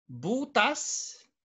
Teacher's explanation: the accent is in the first syllable